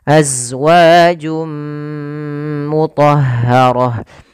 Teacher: Ada bacaan idgham bighunah, yaitu idgham kembali itu masukkan tanwinnya ke huruf mim. Suara nunnya hilang · masukkan tanwinnya ke huruf mim, suara nunnya hilang, maka jadi suara n-nya hilang. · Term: idgham bi gunnah